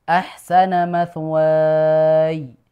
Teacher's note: Jadi tidak ya yang dipanjangkan tapi wawunya dulu.